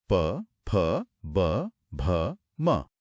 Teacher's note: त वर्ग के बाद प वर्ग। तो प वर्ग का उच्चारण होठों से होता है। · इन सभी वर्णों को बोलते समय दोनों होठ आपस में पूरी तरह मिलते हैं। पीछे से आ रही हवा को एक पल के लिए रोकते हैं और फिर अचानक से खुल जाते हैं। जैसा कि हमने शुरुआत में ही आजमा कर देखा था बिना होठों को मिलाए प बोलना मुमकिन ही नहीं है। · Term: ओष्ठ्य